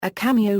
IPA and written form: ˈkæmioʊ (cameo)